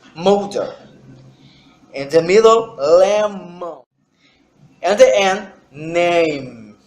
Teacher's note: If you try to put your finger in your nose, if you try to pronounce this sound, you cannot, because the sound needs the air. It's bilabial because the lips, the up lips and the down lips are together.